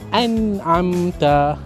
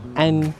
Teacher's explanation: Jelaskan bunyi nun, jangan dengung. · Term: izhar halqi